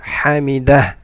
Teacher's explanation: Ha from mid of the throat. Hamidah. And there is a ha at the end.